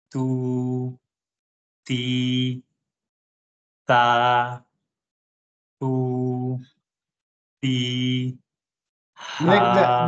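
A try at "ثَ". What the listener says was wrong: Make the tha sound clear. Tha, thu, thi.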